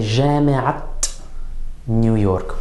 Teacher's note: we're going to pronounce that 'taa marbuuTa' as a 'taa,' as a 't' sound, on all the words except the final word of the اضافة